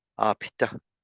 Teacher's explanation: It's like almost like you're creating that breath sound instead of the sound when we say apita. You're going from B to the T, and the thing that separates them is the breath sound.